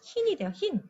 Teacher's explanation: 이 발음은요, 흐인하고 이중모음 발음을 하지 않고 그냥 어떻게 합니까? 단모음 발음으로 한답니다.